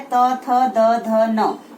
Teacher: जो हमारी जीभ है वो हमारे दांतों को टच करती है, हमारे दांतों को छूती है, इसलिए इसको दंत्य वर्ग कहा जाता है।